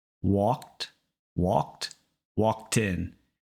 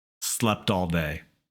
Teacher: it's almost like that t sound moves to the start of the next word